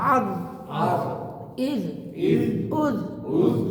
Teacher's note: হামজা দিয়ে আজ, আইন চাপ দিবেন না